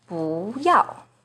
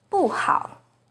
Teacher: 不 is the second rising tone in 不要, but it's the 4th falling tone in 不好.